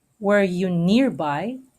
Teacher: Were you nearby is unstressed, unstressed, stressed, stressed.